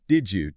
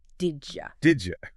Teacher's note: And the Y sounds, they sort of merge, they assimilate, right? And create a J sound.